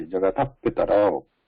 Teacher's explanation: Half visarga pronunciation when it is followed by pa or pha. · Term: Upadmaniya